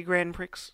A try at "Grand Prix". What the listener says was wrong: Are you saying Grand? So you're saying Grand and Prick. So you won't stress the D In Grand. But you will stress the X in Prick.